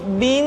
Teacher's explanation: ditahan suaranya ketika mengucapkan Nun tasdid